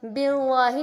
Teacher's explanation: لام پر جو ہے کھڑی زبر ہے، اس وجہ سے اس کو ایک الف کے برابر کھینچ کر پڑھیں گے، بہت زیادہ نہیں کھینچیں گے کہ اس طرح سے کہ وہ مد لگنے لگے۔